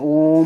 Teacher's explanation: प्लुत स्वर जिनके उच्चारण में 3 गुना समय लगे, यानी कि ह्रस्व में 1 मात्रा का समय लगता है, दीर्घ में 2 मात्राओं का समय लगता है, दुगुना लगता है, और प्लुत में 3 गुना समय लगता है।